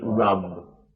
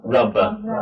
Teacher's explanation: And you're actually not kind of going at the end rub, but you're kind of just going rub. It's very slight little b. You don't want to make another sound after the b. You don't want to go b, rubber, because that's a different meaning.